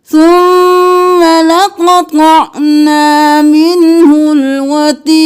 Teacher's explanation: قاف کو موٹا کرنا ہے، لقطع حرکات کو جلدی سے.